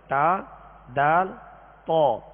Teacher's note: زبان کی نوک اوپر کے دانتوں کی جڑ. زبان کی یہ نوک اوپر کے جو 2 دانت ہیں سامنے والے، ان کی جڑ اندر کی طرف جو اس کی جڑ ہے یہ اس سے ادا ہوتے ہیں، یعنی ان کا ایک ہی مخرج ہے، تا، دال، طا.